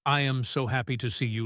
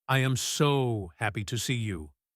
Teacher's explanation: Don't say I am so happy to see you like a robot. Stretch the word so. Go up high.